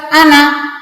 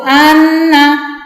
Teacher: seharusnya tasydid dibaca dengung sekitar 2 harokat, tetapi tidak dibaca dengan dengung. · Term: gunnah